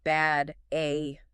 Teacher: bad uses a forward front vowel, the A sound